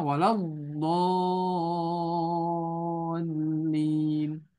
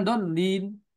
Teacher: Tapi hati-hati di sifat lamnya. Lam ini punya sifat bainiyah, pertengah-tengahan. Dia tidak rokhwa, dia tidak syiddah. Ya, tapi pertengah-tengahan.